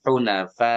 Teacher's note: Dia mau berhenti, mau sambung, hunafa tetap panjang karena hamzahnya selalu ngikut, selalu bertemu. Hamzahnya selalu ikut dia, selalu ketemu.